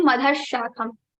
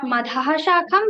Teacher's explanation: Now after madha we have sha. So sha will be repeated into 2 times and repeated 2 times, and this Visarga sound will be removed. It will become urdhva moola madhashakham 2 times sha.